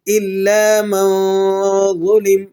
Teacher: اظہار اور ادغام کے درمیانی کیفیت آپ کو محسوس ہوگی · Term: اخفاء